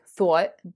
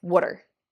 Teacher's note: Philadelphia has a raised thought vowel